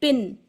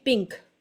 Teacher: पिन में तो नून पढ़ा जा रहा है पिंक में नहीं पढ़ा जा रहा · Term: क्लियर नून